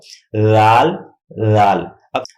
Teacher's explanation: زبان کی نوک اوپر والے دانتوں کے بالکل آخری حصے سرے سے ملا کر لفظ زال ادا کرتے ہیں. یہ ہمارے دانت ہیں، دانتوں کا آخری حصہ ہے اور یہ ہمارے زبان کی نوک ہے.